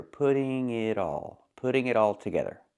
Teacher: The T in it is also between vowels. It's a fast D. It's a fast D too.